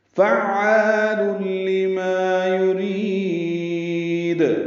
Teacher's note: یرید میں را باریک ہے اور اس سے لمبا کریں گے، دال ساکن پہ قلقلہ ہوگا